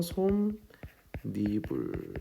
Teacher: 니은을 첨가해서 솜, 니불 이렇게 발음 난다는 겁니다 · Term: 니은 첨가